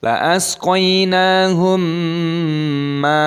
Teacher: mim sukun bertemu dengan mim, dibaca idgham mimi. Idgham mimi ini didengungkan.